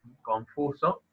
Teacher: Al final de esa sílaba está la N, y esa N se puede pronunciar más como una N o más como una M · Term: neutralización